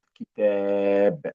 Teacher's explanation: أدي الألف أهو مد. مديت مديت الصوت.